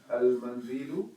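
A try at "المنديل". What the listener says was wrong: Al-mindilu, not mandilu. Mindilu, not mandilu. Mindilu.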